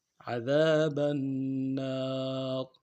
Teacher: وقت کی صورت میں را کو موٹا ادا کریں گے